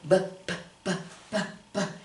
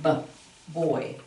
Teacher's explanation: Okay, if I have this word right here, I don't say B-oi, I say b-b-b-b-b. And you can feel that b-b-b-b, the voice sound there